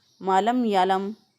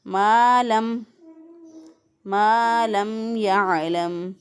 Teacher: मीम ज़बर अलिफ मा अलिफ को लंबा करना है